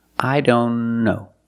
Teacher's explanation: If you link the sounds, I don't know. Link the N with the other N.